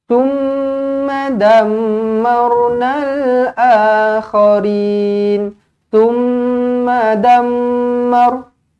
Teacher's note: Mim sabdu. Wajibul gunnah, dengungkan 2 harakat.